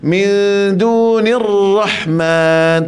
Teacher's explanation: Dunir rahman di sini, ra di sini kita kena tebalkan ra, lambatkan sebut ra, jangan kita segerakan sebut ra